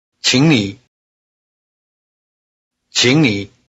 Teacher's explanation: Notice the tone change of qǐng before nǐ.